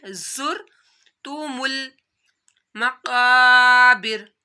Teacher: जा की आप लोगों ने सीटी निकालनी है